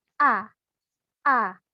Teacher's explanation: kalau Hamzah A itu maksudnya ialah dari pangkal tenggorokan